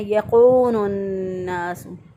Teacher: بعض لوگ اس کو کاف کو قاف سے بدل دیتے ہیں، موٹا پڑھ دیتے ہیں یقون الناس، تو غلط ہو جائے گا۔